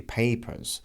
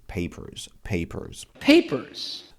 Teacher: in my Australian and in British accents the r is not pronounced